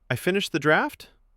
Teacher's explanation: rising pitch on a statement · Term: uptalk